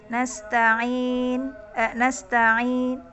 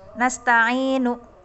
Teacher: Jadi sedikit harokatnya, nu-nya itu hanya sepertiga harokat. Yang mendengar hanya sebelah kita saja, yang duduk sebelah kita saja ya, yang bisa mendengar, karena saking kecilnya harokatnya cuman sepertiga harokat ya. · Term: raum